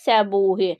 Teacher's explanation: Səbuhidə isə u uzandı